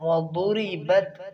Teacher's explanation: وضربت ضاد کو موٹا کریں گے.